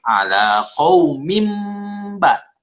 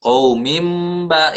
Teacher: Tapi kalau kamu diteruskan ala qaumim ba. Nah, seolah-olah kasratain ini berubah huruf menjadi mim. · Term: iqlab